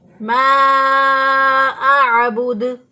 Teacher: आइन को वसे हलक से अदा करेंगे, हमजा को अक्सा हलक से अदा किया।